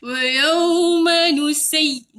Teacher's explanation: Ya tahan sikit, tekan. Bunyi lenyek nusayyiru. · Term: Ya sabdu